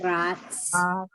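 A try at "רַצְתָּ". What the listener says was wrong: Rats, ta. it's 2 syllables, and the first syllable is rats, and the second syllable is ta.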